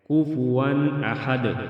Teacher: کفوا میں اظہار ہوگا، ناک میں آواز نہیں جانے دیں گے